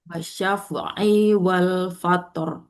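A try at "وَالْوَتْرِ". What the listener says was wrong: Wal watr pakai wawu. Watr. Wa. Tadi berganti fa Ibu di sini di ininya, wawunya.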